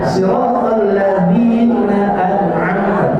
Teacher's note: huruf Zal di sana itu sejatinya tidak ada desis, tidak berdesis, bukan siratal ladzi.